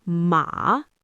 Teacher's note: If I dip my voice down and up, ma, it means horse.